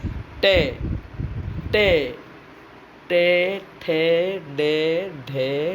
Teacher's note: जिन ध्वनियों के उच्चारण में जिह्वा नोक है ना, जिह्वा नोक यानी वही जिह्वा का अग्रभाग जिह्वा नोक द्वारा उलटकर मूर्धा का स्पर्श होता है वे मूर्धन्य ध्वनियाँ कहलाती है।